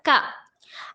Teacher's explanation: کاف زبان کے جڑ سے ادا ہوتا ہے